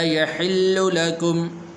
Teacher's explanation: لام کے اوپر پیش ہے، تو اس لام کو لمبا نہیں کرنا، يحل ایسے نہیں پڑھنا۔